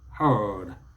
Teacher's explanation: Just the R, the long R sound. The Americans will bring out the R.